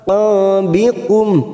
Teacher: ain sukun jangan samakan dengan hamzah